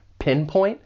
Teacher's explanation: For pronunciation, the verb has two syllables. The stress is on that first syllable, pinpoint. And I'd also like to point out that final T, it's really a stop T.